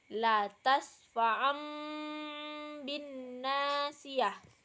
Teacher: mengganti bunyi nun sukun atau tanwin dengan mim yang disamarkan dan disertai dengan dengung dan disambut oleh ba